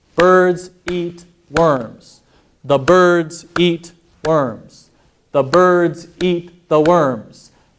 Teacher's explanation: even though the sentences get longer the time it takes me to say the sentences generally the same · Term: stress timed languages